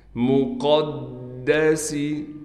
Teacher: مقدسی، قاف کو دال سے ملائیں گے، دال پر تشدید ہونے کی وجہ سے تھوڑا ٹھہراؤ کیا جائے گا، سین میں سیٹی ادا کی جائے گی۔